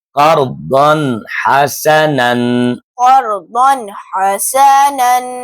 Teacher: تنوین کے بعد حروف حلقی میں سے ہا آ رہا ہے، اس وجہ سے تنوین کی آواز کو ظاہر کر کے پڑھیں گے